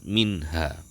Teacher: nun mati ataupun tanwin tadi dibaca jelas tanpa ada dengung dari hidung